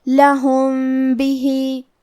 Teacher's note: کلمت لہم کے آخری میں میم ساکن ہے، پھر حرف البا ہے. با حروف الاخفاء الشفوی میں سے ہے تو ہم یہ حکم کو غنہ کے ساتھ ادا کریں گے.